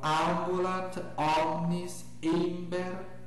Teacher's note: com detalhe de que as vogais nunca se tornam nasais